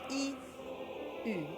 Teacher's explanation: this is the frontal rounded sound that we don't have in English